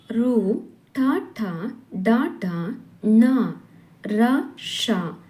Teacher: ಅಕ್ಷರಗಳು ನಾಲಿಗೆಯ ಮೇಲ್ಭಾಗವಾದ ಮೂರ್ಧವೆಂಬುದರ ಸಹಾಯದಿಂದ ಹುಟ್ಟುತ್ತವೆ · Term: ಮೂರ್ಧನ್ಯಗಳೆನಿಸುವು